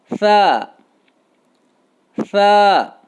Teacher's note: ثا کا مخرج زبان کی نوک اور ثنایا علیہ کا کنارہ، زبان کی نوک اور ثنایا علیہ کا کنارہ۔